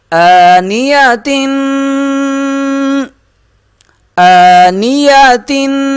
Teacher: حمزہ کو ایک الف کے برابر کھینچیں گے، آنیتن، تنوین ہے، یہاں غنہ کریں گے۔